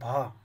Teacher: हिंदी की स्पर्श घोष महाप्राण ओष्ठ व्यंजन ध्वनि है। तो इनमें से जो घोष है महाप्राण ओष्ठ व्यंजन है वो है भा।